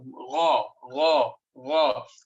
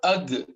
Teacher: the root of the tongue touching that part which is the hanging part in our throat